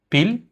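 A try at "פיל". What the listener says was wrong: Pil, nice.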